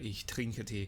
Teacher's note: in spoken German, particularly in colloquial German, you may notice that people don't really pronounce the e on the end